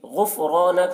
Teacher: غین کو پر پڑھیں گے، غین حرف مستعلیہ میں سے ہے. را کو پر پڑھیں گے، را کے اوپر زبر ہے.